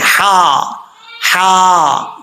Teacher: होता ता के बाद हा है यह हा बारीक पढ़ा जाएगा इस हा का ताल्लुक जो हल्क मुंह की तरफ है उसके साथ है तो इसको बारीक पढ़ेंगे